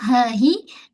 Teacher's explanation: Ha pula tonjolkan baik-baik dari pangkal kerongkong. Ha hi jangan baca khaf.